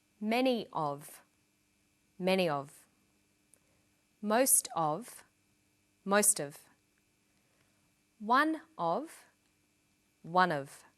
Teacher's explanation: Notice that of in these phrases is unstressed.